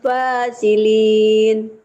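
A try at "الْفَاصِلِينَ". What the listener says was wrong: Tebalkan sadnya ya Bu. Jangan fasilin. Kalau fasilin itu sin ya Bu baca ya.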